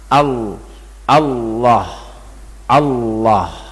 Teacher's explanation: tebal itu ya menjadikan suara mirip dengan suara O